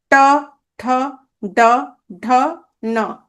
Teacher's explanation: এগুলোকে মূর্ধন্য ধ্বনি।